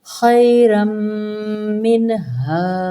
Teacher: خیرم، یہاں پہ بھی لین کا قاعدہ ہے، تنوین کو میم مشدد کے اندر ادغام کریں گے، یہ بھی یرملون کا قاعدہ بن جائے گا۔ خیرم، آگے نون ساکن ہے اور آگے ہا ہے حروف ہلکی، تو ہم یہاں پہ اظہار کریں گے